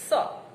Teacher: એના ઉચ્ચારણમાં જીભનો અગ્ર ભાગ ઉપલા દાંતની પાસે ગોઠવાયેલો હોય છે. સ. અને હવા દાંત સાથે ઘસાઈને બહાર આવે છે. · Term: દંત્ય સંઘર્ષી